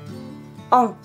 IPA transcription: ã